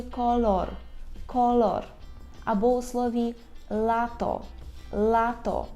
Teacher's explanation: Ми повинні кінчиком язика торкнутися верхнього піднебіння так і вимовляти л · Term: звук л